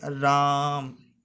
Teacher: तो इसको अगर हम लोग बोलें प्लुत स्वर के अनुसार तो बोलेंगे राम, इसमें काफ़ी लंबा खींचा जाएगा